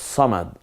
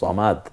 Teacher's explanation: এর হলো সদ, সদের উপরে যদি পেশ হয় তাহলে সু হবে, জের হলে সি হবে, কিন্তু যখন জবর হবে তখন সেটাকে সা না পড়ে আমরা সই বলবো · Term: ইস্তেআলার হরফ